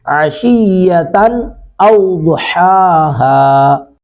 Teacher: تا پر تنوین ہے، نون تنوین کے بعد حمزہ ہے، تو یہاں پہ اظہار کریں گے